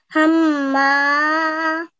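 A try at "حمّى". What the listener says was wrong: But this time, try to give the sound from the middle of your throat. Hamma.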